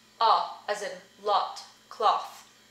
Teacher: as in lot cloth that one's slight but it's different and it's different because of the rounding of your lips